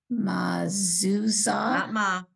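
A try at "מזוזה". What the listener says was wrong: Not ma.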